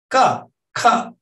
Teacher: So you have ka, ka in high register tone, and you do have low register tone, but you have ka with this breathy voice, and then you still have voicing.